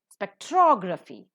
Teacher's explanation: spectrography the second syllable is accented